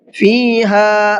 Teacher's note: فیہا ہا کو کھینچ کر کے پڑھا ہے اس لیے کہ یہاں پر الف مدہ کا قاعدہ ہے